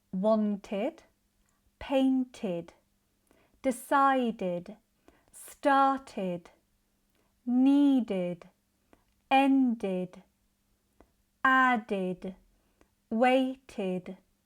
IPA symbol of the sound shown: ɪd